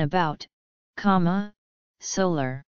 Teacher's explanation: a schwa, in many unstressed syllables